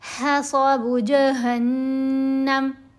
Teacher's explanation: وقف کرنے کی صورت میں میم کو ہم نے ساکن پڑھ دیا، ساکن کر دیا، میم کے اوپر زبر نہیں پڑھی جائے گی۔